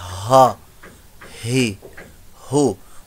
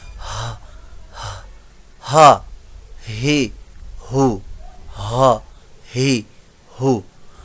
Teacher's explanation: हा जो है ये बॉटम पार्ट ऑफ थ्रोट, हलक के नीचे वाले हिस्से से अदा होता है। डीपली आवाज, इसकी सांस बाहर निकलती है, हा ही हो।